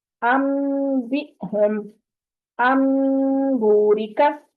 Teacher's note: نون ساکن یا تنوین کے بعد اگر حرف با آ گیا تو وہاں پر اقلاب ہوگا، اس کو میم ہی پڑھیں گے، نون نہیں پڑھیں گے.